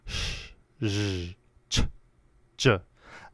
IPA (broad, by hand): ʃ ʒ ʧ ʤ